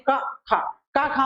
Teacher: का, खा में कोई कंपन नहीं होता है, इसलिए ये हमारा अघोष कहा जाता है